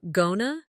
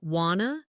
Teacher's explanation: Did you notice going to became gonna, and want to became wanna? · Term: connected speech